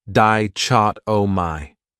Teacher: This word has 4 syllables, and the stress is on that second syllable, dichotomy. That third syllable has that schwa